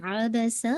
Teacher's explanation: आइन है तो आ नहीं निकालेगा, आइन निकालेगा। अबसा, सीन की साउंड बहुत शार्प होनी चाहिए, व्हिस्लिंग साउंड।